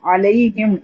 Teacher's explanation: जो मीम है वो दोनों होठों के मिलने से ही अदा होता है